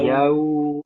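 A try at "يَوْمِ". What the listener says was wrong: Terus jangan ditekan yau. Nah, itu ditekan. Nah, itu dihindari.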